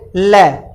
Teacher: ये बगल से दोनों तरफ से आप हवा बाहर निकालोगे, ल, तभी ल बोलने में आएगा। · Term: पार्श्विक व्यंजन